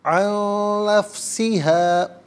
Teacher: کلو نفس تجادل عن نفسها، اب یہاں دیکھیں کہ ان میں نون ساکن ہے، نفسی کا نون آ رہا ہے، تو نون ساکن کو نون کے ساتھ ملا کر نون کی آواز کو غننے کے ساتھ ادا کریں گے